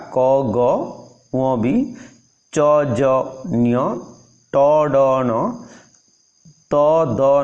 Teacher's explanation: एगुड़िक उच्चारण समय रे फुसफुसरु अल्प वायु बाहर को निर्गत हेउथिबारु एगुड़िक अल्प प्राण ध्वनि बा आन एस्पिरेट्स कुहा जाए